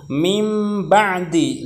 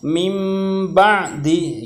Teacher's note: nun mati bertemu dengan huruf ba. Maka nunnya itu diganti dengan huruf mim, ya. Mimnya kan tersembunyi, ya, mim ba'di, gitu ya. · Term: iqlab